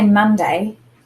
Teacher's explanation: when we listen to the word Monday, the mun is the accented syllable. So when we're this week talking about accented syllable, what I mean is when you say a word, what is the part of the word that we put the most emphasis on, or we say a little bit more strongly?